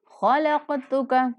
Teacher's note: خا کو قاف کو دونوں کو پر کر کے پڑھنا ہے، قاف ساکن آ رہا ہے تو قاف پر قلقلہ بھی کرنا ہے۔